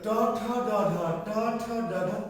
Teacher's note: ট ঠ ড একটু তালু থেকে একটু সামনে, দাঁতের গোড়ার পিছনে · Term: মূর্ধন্য